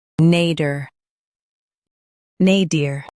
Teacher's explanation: Stress nay and keep dir soft in US, dear in UK.